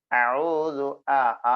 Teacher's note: ആ എന്നത് തൊണ്ടക്കുഴിയിൽ നിന്നാണ്